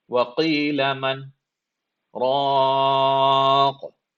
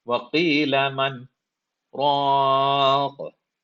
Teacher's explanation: Now notice, I stopped at man, but I did not take a breath. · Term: sakta